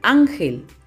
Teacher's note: La palabra ángel. ¿Dónde está la mayor fuerza de voz? Sí, en la sílaba an.